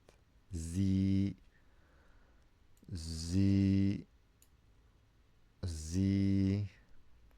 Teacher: The za with Kasrah is zi. And the ya extends it.